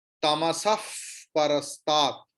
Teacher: विसर्ग की बाद प है, इसलिए विसर्ग की उच्चारण फकार जैसे होगा।